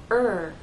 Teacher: So if you take your hand and place it on your throat and say R, you should feel vibration. It's a voiced sound from beginning to end. The second thing you need to do is round your lips.